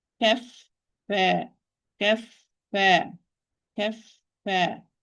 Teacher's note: The time of fa is going to be longer than the time of la. The time of fa sakina is longer than the time of lam sakina because fa is a rakh letter, soft letter, while lam it's a bayni letter, in between letter.